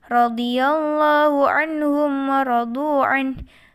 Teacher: Anhum adalah bacaan izhar karena ada nun sukun bertemu dengan ha, maka dibaca jelas tanpa mendengung.